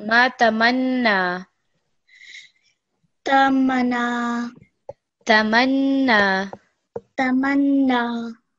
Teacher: make the word flow a little bit better, and also just put some extra stress on the noon.